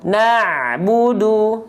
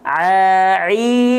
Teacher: ain di tengah tenggorokan, kalau hamzah di bawahnya. Banyak orang melafalkan ain terlalu ke bawah, jadinya hamzah.